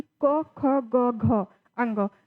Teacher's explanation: जो क ख ग घ अंग होता है वो कंठ व्यंजन होता है। यानी जब आप बोल के प्रैक्टिस करेंगे तो आपको यह महसूस होगा कि क, ख, ग, घ, अंग।